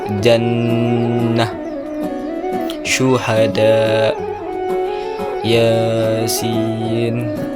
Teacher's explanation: Huruf jim, shim, ya keluar dari tengah lidah menyentuh langit-langit